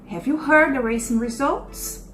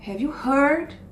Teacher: Olha como heard sobe. The racing results, por ser uma pergunta, esse finalzinho é mais entonado, ele tá mais alto.